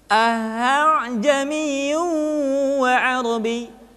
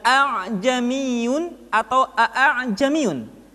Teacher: Hamzah kedua dibaca dengan suara yang samar